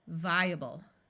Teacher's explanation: the A schwas, or takes on a muffled sound that sounds more like a short U or a short I.